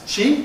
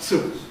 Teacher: your t and d sounds, your alvola closives automatically turn into africates before a close vowel